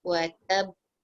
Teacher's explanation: Bila watab tahan sekejap lepas tu lepas. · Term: echoing sound